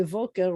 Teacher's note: I'm not going to say Boker. I'm going to say Voker because it's coming after a long vowel. When your mouth is open, Vayhi, we're going to do Voker.